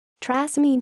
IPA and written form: tʁa.si.mɛn (Trasimène)